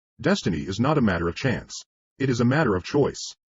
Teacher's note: you will want to emphasize destiny, for it is the principal idea in your declaration, and you will put some emphasis on not, else your hearers may think you are affirming that destiny is a matter of chance. · By all means you must emphasize chance, for it is one of the two big ideas in the statement. Another reason why chance takes emphasis is that it is contrasted with choice in the next sentence.